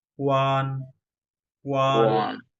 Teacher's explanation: এবং এটা কোন টোন আছে? ফার্স্ট টোন, একদম ফ্ল্যাট